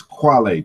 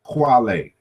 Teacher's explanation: this K in the initial position becomes rounded